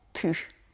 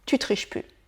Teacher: à l'oral on a tendance à l'écourter en PU